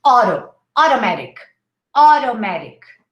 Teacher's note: we say oh and then we say audo in american english